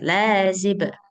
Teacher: Lanya panjang dua harakat.